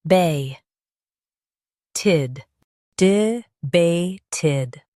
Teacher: Stress bay and keep d soft.